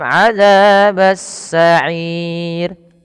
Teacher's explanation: ada hukum tajwid juga berupa ro tarkik ro yang dibaca tipis